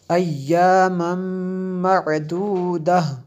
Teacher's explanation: تنوین کے بعد میم ہے حروف یر ملون میں سے، اس لیے یہاں پہ غنہ کیا